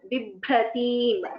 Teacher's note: The second bha is Mahaprana. First one is Alpa Prana.